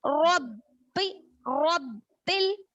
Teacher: रब्बी तजदीद के साथ सख्ती से पढ़ेंगे, यानी खलखला अपनी आवाज टकरा कर पढ़ेंगे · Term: खलखला अकबर